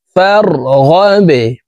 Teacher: ওয়া ইলা রব্বিকা ফার জবর ফার গাইন বা জবর গাবে ফারগাবে বা কলকলার হরফ নিচের দিকে ধাবিত করে ধাক্কা দিয়ে উচ্চারণ করব এই বা ওয়াকফের ক্ষেত্রে সাকিন করে ফেলবো ফারগাবে ওয়া ইলা রাব্বিকা